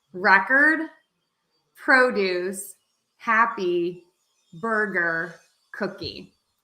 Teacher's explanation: stressing syllable number one meaning we are going to make that louder we are going to make that syllable higher in pitch and we're going to make it longer